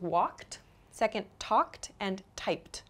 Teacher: You can hear the ED sound at the end of each verb. It's spelled ED, but the pronunciation is a T sound.